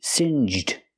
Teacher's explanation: make the J sound like juice and Jump Plus the D